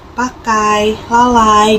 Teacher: ada diftong naik menutup maju Ai nah ini tuh terdapat dalam kata pakai selesai